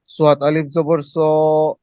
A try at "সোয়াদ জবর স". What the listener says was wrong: প্রথমটা টান নেই না।